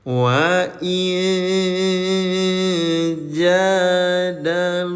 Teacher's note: namanya iqhfa samarkan bacaannya nih nun sukunnya disamarkan tahan dua harakat